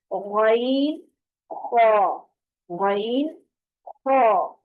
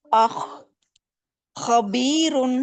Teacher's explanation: گلے کی خراش کے ساتھ، گلے کی رگڑ کے ساتھ خا ادا ہوگا